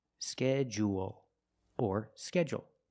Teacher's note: or you can make it short and say schedule schedule also we notice that du making the J sound like in juice and jump · we notice the D-U making the J sound